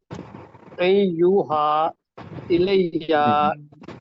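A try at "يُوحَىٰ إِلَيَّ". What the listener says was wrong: نہیں، الف کے اوپر زبر پڑھ رہے ہیں، الف کے نیچے زیر سر.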